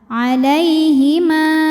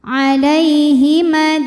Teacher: kalau wasal madnya gugur mimnya dibaca pendek namanya takhus Bil hadfi Kenapa sebabnya sebab ada pertemuan dua huruf